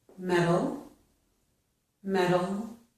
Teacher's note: We do that because we change the letter T, or the sound T, to a quick D sound. This is called a flap T or an alveolar tap sound. · It's a very quick D sound where the tongue quickly touches the alveolar ridge behind our top teeth. So we get D very quickly.